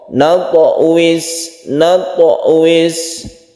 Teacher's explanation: Bunyi pantulan 'tho' muncul secara alami, tidak dipaksakan. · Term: qalqalah sugro